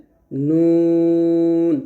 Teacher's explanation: নুনের মাখরাজটা হলো জিহ্বার আগা উপরে তালুর সঙ্গে লাগে, মানে জিহ্বার আগা তার বরাবর উপরে তালুর সঙ্গে লাগিয়ে নুনের মাখরাজ উচ্চারণ করতে হবে।